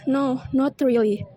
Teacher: The word no is said with falling intonation, emphasizing a final or definite statement.